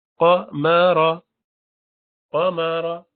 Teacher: رو پر بھاری کر کے پڑھیں گے